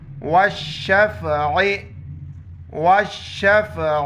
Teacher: اس کو عین پڑھیں گے، گلے سے ادا کریں گے · آخر میں عین کو ظاہر کریں گے وقف کی حالت میں